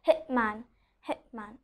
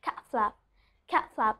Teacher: So here you are seeing that letter T is there, but I'm not pronouncing the letter T because it's followed by a consonant